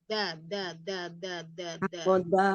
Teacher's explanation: jadi nempelnya itu punggung ujung lidahnya nempelnya pada ujung gigi seri atas